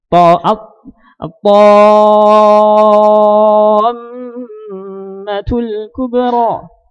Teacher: Dengan kita menahan 2 harakat sudah jelas itu musyaddadah. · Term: mim yang tasydid